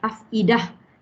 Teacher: Jadinya kita kena sebut ta marbutah. Wakaf padanya dia bertukar menjadi huruf ha. Maka dia ada hamas di situ bila kita wakaf ya. Afidah, hilang bunyi ta.